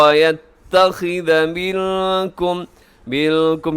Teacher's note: نون ساکن کے بعد کا یہاں کاف ہے تو یہاں پہ اخفا ہوگا